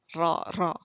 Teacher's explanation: sifat taqrir yaitu ujung lidah bergetar ketika pengucapan huruf